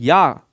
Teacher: इसमें मजेदार पॉइंट क्या है, या का उच्चारण स्थान अगर पूछा जाए तो या, ध्यान देना बहुत बार आया है तालु, या का उच्चारण स्थान तालु से होता है